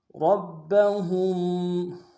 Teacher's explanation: را کو با کے سامنے لانا ہے، را کو موٹا ادا کریں گے، با کے اوپر تشدید زور دیں گے